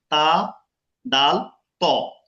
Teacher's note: তা, দাল, ত। জিব্বার আগা, উপরে 2 দাঁতের গোড়া।